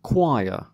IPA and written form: ˈkwaɪə (choir)